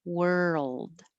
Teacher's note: take time for your tongue to move from the r to the l